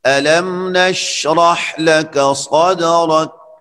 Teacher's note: شین میں صفت تفشی ہے، آواز اس میں پھیل جاتی ہے لیکن حرکت نہیں ہوتی